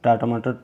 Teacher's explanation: जो ट है वह अल्प प्राण भी है और अघोष भी है